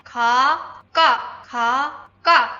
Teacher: Put your hand in front of your mouth. When you say ka, you shouldn't feel a big puff of air. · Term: double consonants